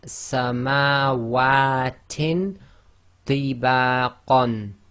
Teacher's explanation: So we do the Ikhfaa, hiding of the Noon sound